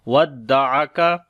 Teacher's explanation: عین کو گلے کے درمیان والے حصے سے